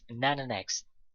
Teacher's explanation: If you can hear, he doesn't say and then the next, but he says nana next. And then and the are pronounced together as nana next.